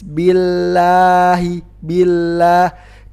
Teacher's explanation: sebelumnya kasrah maka huruf lam nya huruf lam nya dibaca tipis